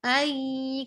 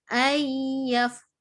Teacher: Ai kita bunyikan terus kepada makhraj huruf ya tanpa membunyikan huruf nun ini. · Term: dengung